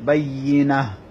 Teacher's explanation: এখানে তাটা হা হয়ে যাবে ওয়াকফ করার কারণে, পেশটা সাকিন হয়ে যাবে। · এটা আমি আপনাদের কাছে আবারও বলতেছি, এখানে তা ধাক্কা হবে, তিয়া হুমুল বায়্যিনাহ, বায়্যি নুন ইয়ার মধ্যে তাসদিদ, ইয়া শক্ত হবে, ইয়ার মধ্যে তাসদিদ হলে ইয়া একটু শক্তভাবে উচ্চারণ হয়